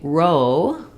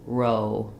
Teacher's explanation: So when we say row with the o diphthong, we want to feel that sliding, start a little more closed and a little more rounded